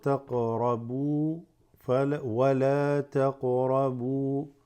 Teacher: Slight qalqala on the qaf